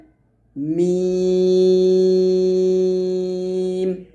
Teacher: মিমে দুই ঠোঁটের শুকনা অংশে মিলবে